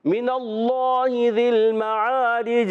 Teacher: بعض بچوں بڑوں کی عادت ہوتی ہے وہ پڑھتے ہیں من اللہ ذی المعارج، چھ نہیں، جیم پڑھنا ہے، عربی میں تو چھ ہوتا ہی نہیں ہے، یہ تو اردو میں چھ ہوتا ہے، ٹھیک ہے نا، تو آپ نے جب پڑھنا ہے جیم کی آواز چھ جیسی نہیں ہونی چاہیے، تو آواز آئے گی من اللہ ذی المعارج۔